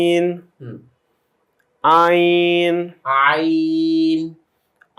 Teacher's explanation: সাধারণ জনগণের কাছে বা আপনাদের কাছে সবচেয়ে কঠিন যে হরফটা লাগে, আইন। গলাতে একটু চাপ দিয়ে বের করতে হয়, আইন হলকের মাঝখান থেকে।